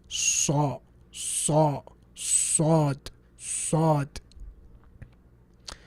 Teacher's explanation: When you say Sad, your tongue goes up and it causes the sound to hit the top of your palate and bounce back, and it gives you that heavy sound.